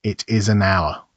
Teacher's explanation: R begins with the letter H, but that H is silent, so the first sound is the vowel O.